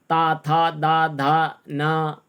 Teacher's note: त, थ, द, ध, न दाँततिर स्पर्श हुने